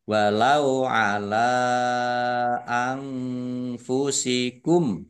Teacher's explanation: nun sukun bertemu dengan huruf Fa bacaan Ikhfa dibaca samar-samar